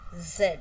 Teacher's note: So, it's voiced alveolar fricative.